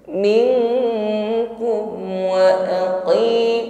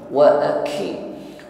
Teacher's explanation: kuatkan tekanan huruf qaf, kasrah yang diucapkan dengan lemah, bukan wa aqimu, tidak disertai dengan nafas yang mengalir.